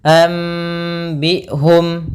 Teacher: Maka apabila ada huruf nun mati dalam bacaan apapun, yaitu ada nun mati bertemu dengan huruf ba, maka kita namakan dengan bacaan iqlab, yaitu bacanya kita ganti suara nunnya menjadi suara mim. Maka sambil ditahan dengan gunnah, anbi'hum.